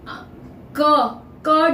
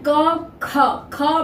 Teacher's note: तालू के पीछे कंठ जहां स्टार्ट होता है उसको छूकर नीचे जीभ का पीछे का भाग ऊपर के कंठ को छूता है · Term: क वर्ग